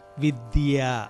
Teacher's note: విద్య అన్నప్పుడు మీకు చక్కగా నాలిక పై దంతాలకి తగులుతుంది